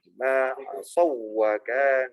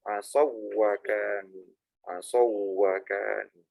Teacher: Huruf wawu itu huruf bibir. Huruf bibir tok ya. Dia nggak masuk huruf hidung aslinya.